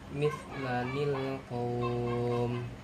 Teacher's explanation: Ciri-cirinya ketika ada tanwin bertemu dengan hamzah wasol, baik di permulaan ayat ataupun di tengah ayat, maka harokat hamzah wasol diganti dengan bunyi huruf nun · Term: nun wiqayah